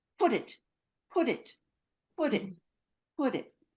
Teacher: we put the words together we link them together we connect them so this comes out to sound very fast · it ends with a sound of a consonant, like a t, like put, and the next one starts with a vowel, in this case I, we put the words together. We link them together, we connect them.